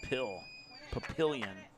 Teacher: So the emphasis was on the middle syllable.